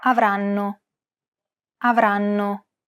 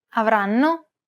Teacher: The first N is held for roughly the same amount of time as all the other syllables. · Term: syllable-timed